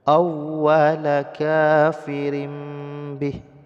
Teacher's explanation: mim sukun seolah-olah di sini ada mim sukun awala kafirim Bih jadi dibalikkan tanwin menjadi Bunyi mim kemudian didengungkan kadar dua harakat · tanwin bertemu dengan ba hukumnya adalah iqlab, yaitu membalikkan bunyi tanwin menjadi bunyi mim sukun. Seolah-olah di sini ada mim sukun.